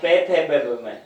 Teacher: पे को बोलेंगे तो अपन होठों से ही बोल पाएंगे, बिना होठों के पे फे बे बे में ये नहीं बोल पाएंगे। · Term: ओष्ठ